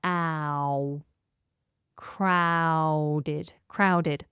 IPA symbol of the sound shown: aʊ